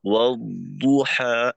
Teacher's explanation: মাখরাজে আওয়াজের গুঞ্জনটা চালু থাকতে থাকতে তারপর এই দদের পেশের উচ্চারণটা হবে। জজম যুক্ত অবস্থায় অর্থাৎ তাজদীদের প্রথম অংশে আওয়াজের গুঞ্জনটাকে বন্ধ করে দেওয়া যাবে না।